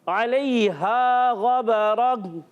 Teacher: आइन की अदायगी हलक के दरमियान वाले हिस्से से